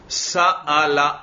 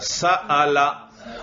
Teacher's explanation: حمزہ حلق کے آخری حصے سے، جو گلے کا آخری حصہ ہے نیچے سینے کی طرف، وہاں پر ذرا انگلی رکھیں.